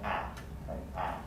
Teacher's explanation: at the same time okay so in this particular combination of plus low plus front we're going to have the vowel ah a low front vowel